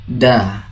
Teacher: makharijul hurufnya berada di ujung lidah bertemu dengan pangkal gigi seri bagian atas. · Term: huruf dal